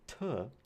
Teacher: a t is voiceless, it is alveolar, and it is a stop. So we call this a voiceless alveolar stop.